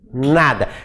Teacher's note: língua ver a posição da língua pra dizer nada disso nada a língua toca na arcada dentária superior